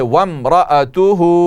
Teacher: وامرأته وم واو کو میم سے ملائیے